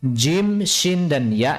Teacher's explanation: Jim, shin, dan ya ini sama makhrajnya. Cuman sifatnya yang berbeda. Jadi di tengah-tengah lidah.